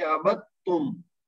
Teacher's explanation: دال اور تا کا چونکہ مخرج ایک ہی ہے تو اس لیے نا وہ آواز آپس میں مکس ہو جائے گی تو ایک ہی آواز بن جائے گی ابد تم. یعنی ہم نے یہ نہیں کہ دال کو پڑھنا نہیں، دال کو بھی پڑھنا ہے، لیکن پڑھتے ہوئے ایسے ہوگا کہ جیسے دال اور تا کی آواز مکس ہو جائے گی تو وہ ایک جیسی لگے گی. · اچھا اس میں ایکچولی کیا ہو رہا ہے کہ جو دال ہے نا, دال بھی ساکن ہے اور اس کے بعد جو ہم نے اس کو تا آ رہا ہے. تو اب یہ دال اور تا کا چونکہ مخرج ایک ہی ہے تو اس لیے نا وہ آواز آپس میں مکس ہو جائے گی تو ایک ہی آواز بن جائے گی ابد تم.